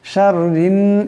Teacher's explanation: শাররিন এই রায় নুনকে ধরবে, এই রাকে পাতলা আওয়াজে পড়তে হবে, রা নিচে জের আসছে।